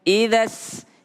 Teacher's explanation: Dimulai dengan huruf hamzah i. Idza sama ada sin dengan tasydidnya, maka harus ada tekanan.